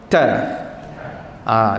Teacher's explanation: Huruf ta kita kena tekankan di bahagian gusi. Dengan angin keluar serentak dengan suara. Sebut ta. Letak di gusi. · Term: syiddah